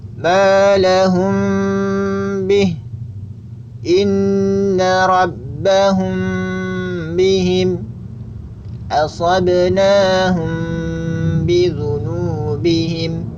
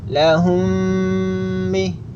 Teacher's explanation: Kemudian yang perlu diperhatikan secara praktek, menggunakan mim sukun yang bertemu dengan huruf ba atau kita kenal dengan ikhfa syafawi itu dengan cara menempelkan 2 bagian makhraj huruf mim, yaitu bibir atas dan bibir bawah, secara ringan, tidak mantap